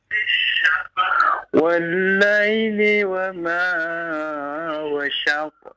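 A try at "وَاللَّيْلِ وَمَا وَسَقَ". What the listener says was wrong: Ya, coba diperhatikan panjang pendek Pak ya. Wa ma wasaq. Jangan terlalu panjang.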